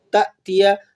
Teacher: الف جو ہے وہ نرمی سے ادا ہوتا ہے اور حمزہ کو جھٹکے سے ادا کیا جاتا ہے